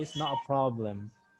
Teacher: They don't pronounce T, especially if you are hearing any British native speaker is speaking on BBC.